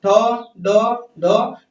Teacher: जीभ हमारी देखिए कहां जाके मारेगी? उस मूर्धन्य वाले हिस्से पर। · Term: मूर्धन्य वर्ण